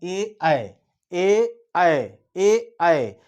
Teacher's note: जहाँ पे कंठ और तालु दोनों का प्रयोग होता हो वो कंठ तथा तालु।